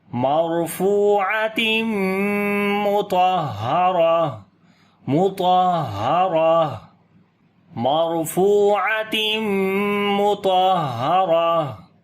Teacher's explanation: 2 زیر ختم ہو جائیں گی، تو یہاں پر بھی پھر سانس جاری کریں گے یعنی کہ ہمس کریں گے ہا کے اوپر